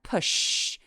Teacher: 때 성대가 올리지 않는 발음이 성대를 어 손가락으로 만져 보시면 push 목을 만져보면 울림이 없을 거예요 울림이 느껴지지 않으면 무성음